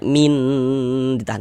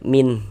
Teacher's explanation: tidak didingungkan, tidak digunahkan. Maka dibaca pendek saja. Kita baca min. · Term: izhar halqi